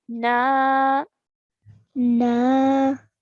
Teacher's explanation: a noon with a fatha, followed by an alif mad. So we're stretching for 2 counts.